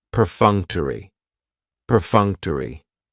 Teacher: has four syllables and the stress is on that second syllable · Perfunctory has 4 syllables, and the stress is on that second syllable, that funk, perfunctory. That third syllable has the schwa, and it's going to end with that long E sound